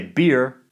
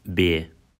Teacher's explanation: accents of New Zealand are generally non-rhotic, meaning that R is not pronounced at the end of a syllable, but is rendered as a vowel. For example, I say beer, but Kiwis say beer.